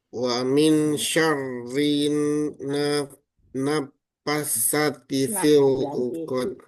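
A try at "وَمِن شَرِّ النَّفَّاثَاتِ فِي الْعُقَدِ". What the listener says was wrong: Fa-nya dipanjangin 2 harokat, Pak. Naffatha.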